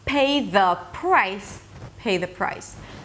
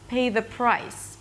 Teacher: The P is softer. The A is with less energy. The is really, really soft. Not the price, price.